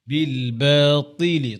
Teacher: ত মোটা, তা হবে ইতবাকের হরফ, সবসময় মোটা থাকবে